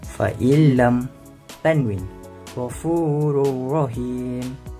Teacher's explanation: menggabungkan bunyi nun kepada huruf selepasnya tanpa dengung. Hurufnya adalah lam dan ra. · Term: idgham bila gunnah